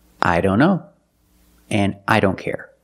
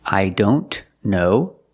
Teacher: the t is between consonants so we don't pronounce it